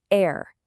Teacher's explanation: That R sound at the end can almost vanish. But in a general American accent, that R is hard and clear